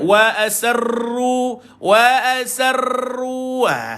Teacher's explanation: Okay, tahan dan lepaskan bunyi ra bila dia ada syiddah, bila dia ada tasydid ataupun sabdu, maka tuan-tuan bila sabdu pada ra, tuan-tuan jangan lagi getarkan bunyi dia.